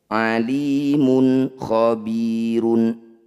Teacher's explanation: Dumah tanwin bertemu kha disebut bacaan izhar halki. Bunyi dumah tanwin baca dengan jelas tanpa dengung.